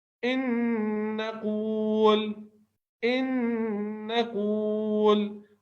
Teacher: نون ساکن کے بعد نون آیا ہے تو یہ اس پہ تشدید لگا کر ادغام کیا گیا ہے قاعدے کی وجہ سے. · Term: ادغام مع الغنہ